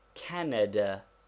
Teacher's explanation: there is a slight stress upon the first syllable but not enough to make it a long vowel